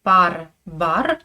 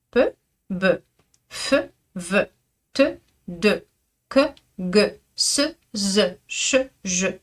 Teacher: Peu est sourd, c'est une consonne sourde, c'est un son sourd. Be est sonore.